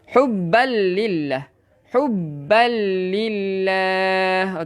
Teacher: Idgham bila gunnah memasukkan tanpa dengung.